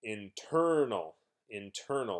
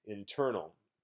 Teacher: if I exaggerate a little bit, you can hear stress on the second syllable.